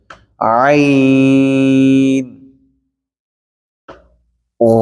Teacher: আইন বলার ক্ষেত্রে আমাদের গলার ভিতর থেকে উচ্চারণ হবে